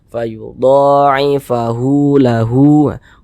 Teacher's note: hu dibaca panjang Mad Silah qasirah panjangnya dua harakat